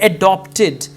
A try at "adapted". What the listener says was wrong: So they have adapted it to ballet and not adopted, adapted.